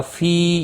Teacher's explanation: فی یا مدہ ہے، ایک الف کے برابر کھینچ کر پڑھیں گے